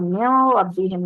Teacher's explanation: اب یہاں پر ملدن نہیں ہوگا، ملدن کریں گے تو یہ غلطی ہوگی، ملدن، من ربہم، اب من ربہم نہیں ہوگا، من ربہم کلیئر کریں گے، نون کی آواز بالکل را کے اندر داخل ہوگی مکمل بغیر غنہ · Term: غنہ کے بغیر ادغام